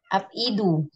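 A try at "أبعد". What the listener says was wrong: Ab'adu. Ab, ab'adu. Polanya selalu af'alu. Huruf sebelum terakhirnya selalu fathah, nggak ada kasrohnya. Ab'adu.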